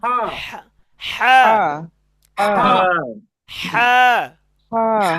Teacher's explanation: গলার মাঝখান থেকে একটু শক্তি দিয়ে হা